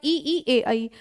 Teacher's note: तो जीभ के प्रयोग के आधार पर स्वरों का विभाजन, अग्र स्वर है आपका ई ए ऐ